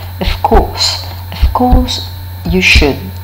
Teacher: instead of using the voiced labiodental fricative of course, we can use its voiceless counterpart because of the following velar plosive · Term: contextual assimilation